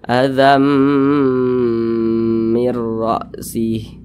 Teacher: Bunyi tanwin ini masuk ke huruf mim, dibaca azam, jangan dibaca azan, jangan, tapi azam, kemudian didengungkan. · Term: idgham bi gunnah